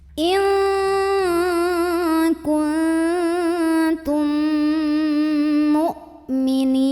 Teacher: mim pertama masuk ke mim kedua sambil dengung · Mad tabi'inya ya sukun sebelumnya kasrah, huruf yang disukunkannya nun. Maka ni-nya ini dipanjangkan, boleh 2, boleh 4, boleh 6 harokat asal konsisten dalam sekali membaca. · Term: idgham mimi, mad arid li sukun